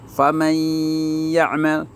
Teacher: hilang nun matinya, dimasukkan ke bunyi huruf ya. Faman ya'mal in nafa'atin mim ma'in min waliyin, begitu ya. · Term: idgham biguna